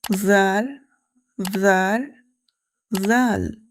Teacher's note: The articulation of zaal is the tip of the tongue touches the edge of the upper front teeth.